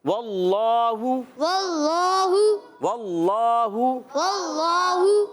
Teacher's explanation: اللہ پاک کا لام موٹا کریں گے، کھڑا زبر ہے، ایک الف کھینچ کر ادا کریں گے،